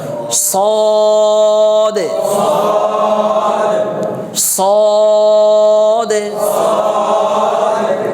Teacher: মোটা হরফ হওয়ার কারণে এটা একটু উপর দিকে ফুলে যাবে আর উচ্চারণের সময় ঠোঁটটা হালকা একটু গোল হবে খুব বেশি গোল না